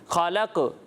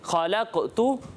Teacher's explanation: یہ آواز قاف کی لوٹتی ہوئی محسوس ہوگی، اسی کو کلکلہ کہتے ہیں